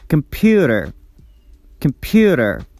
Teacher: The stress goes on the second syllable, so we pronounce it tensed and louder than the rest of the syllables. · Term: primary stress